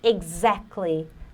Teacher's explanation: exactly, o T você não pronuncia